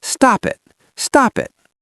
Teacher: A native speaker takes the P from stop and glues it to the I in it.